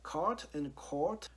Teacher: if you go back like like 50 years you'll see that card and court are pronounced differently but these days especially in america these two sounds are pronounced the same so this is a clear example of sound merge so so